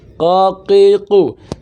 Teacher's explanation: Untuk huruf qaf berada pada pangkal lisan yang paling bawah, paling dalam. Qaqiqu, sehingga tidak terdengar bunyi pecah.